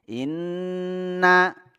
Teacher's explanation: Inna, nah ini ingat ya tadi setiap nun tasdid, mim tasdid ini musyaddad ma'al gunnah. Tasdid yang disertai dengan dengung, ditahan 2 harakat.